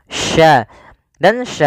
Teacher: makhrajnya dari tengah lidah Sya dan Sya memiliki sifat namanya tafasi tafasi itu yaitu menyebarnya suara di mulut